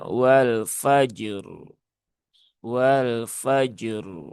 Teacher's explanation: Selain itu, Rnya juga memiliki sifat aridah yaitu tafhim. Maka r-nya dibaca dengan tebal. Jadi jimnya memiliki sifat syiddah, rnya rakhawah. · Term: tafkhim